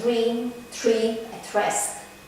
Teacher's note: The post-alveolar t or d are heard before the post-alveolar sonant r.